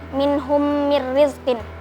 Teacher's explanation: Hukumnya idgham mithlain karena ada mim sukun bertemu dengan huruf mim, dibaca mendengung